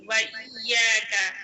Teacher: تشدید، یا کو دو بار پڑھیں گے، ایک بار پیچھے والے حرف سے ملا کر، ایک بار تنہا